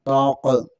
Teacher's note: यहाँ पर ये काफ पुर है, इसे मोटा पढ़ेंगे। और ता का ख्याल रखते हुए इसे पुर नहीं पढ़ना, इसे बारीक पढ़ना है।